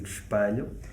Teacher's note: I'm pronouncing the E with the closed A sound